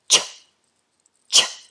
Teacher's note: Now it's very important to know that ch in English is not sh but a more explosive sound ch. So the tongue goes up onto the roof of the mouth. We have a little bit of a hiss but otherwise is explosive ch. So just do that for me now.